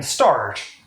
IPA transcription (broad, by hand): stɑɹt